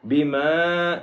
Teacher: وَآمِنُوا بِمَا أَنزَلْتُ مُصَدِّقًا لِمَا مَعَكُمْ وَلَا تَكُونُوا أَوَّلَ كَافِرٍ بِهِ وَلَا تَشْتَرُوا بِآيَاتِي ثَمَنًا قَلِيلًا وَإِيَّايَ فَاتَّقُونِ، یہاں پہ وَآمِنُوا بِمَا أَنزَلْتُ، بِمَا، یہاں پہ چھوٹی مد ہے، اس کو 1 سے 3 گنا لمبا کریں گے